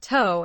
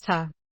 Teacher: Your mouth is relaxed and the vowel is very short. When you hear that ta, you know it's the weak form of to.